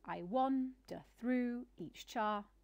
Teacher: each line having an unstressed, then a stressed syllable, then an unstressed, then a stressed syllable, then an unstressed, and so on. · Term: iambic metre